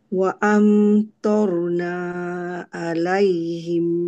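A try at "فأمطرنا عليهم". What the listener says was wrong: Ha lagi sekali pendekkan ma tadi.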